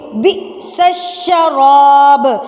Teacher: حمزہ سے پہلے با ہے تو با کو ہم جھٹکا دے کر پڑھیں گے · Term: قلقلہ